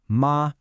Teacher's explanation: You bring your voice up to a high pitch, and you just hold it there. No ups, no downs. Kind of like when a doctor asks you to say, ah, or you're holding a single note while singing. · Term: high flat tone, high, flat tone